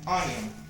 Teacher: onion is two syllables and it is stressed in the first syllable